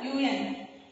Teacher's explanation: when you pronounce UN, there is a sound of consonant of Y